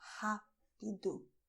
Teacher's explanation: the sound is with your throat, the same way as you pronounce hot in English